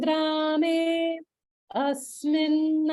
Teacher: there's a pause after grame before asmin